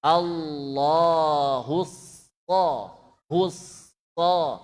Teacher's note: Pergerakan bibir kita, hu itu monyong, so tidak monyong. Maka ini so ya monyong, hu monyong, so tidak monyong.